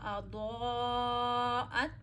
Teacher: अज़ा में दौद मोटा पढ़िए. दौद हरूफ मुस्तालिया में से है.